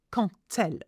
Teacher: the quand has a D at the end, but we don't pronounce the D, we pronounce it T.